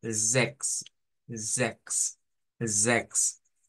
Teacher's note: la pronunciación de ese número es con una E abierta, con una Z